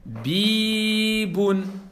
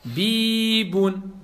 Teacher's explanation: Parce qu'il y a la voyelle longue, il y a le ya.